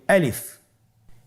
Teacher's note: আলিফ হরফটি মাখরাজ হলো আপনার মুখের শূন্যস্থান থেকে, গলা এবং মুখের শূন্যস্থান হতে আলিফ হরফটি উচ্চারিত হয়।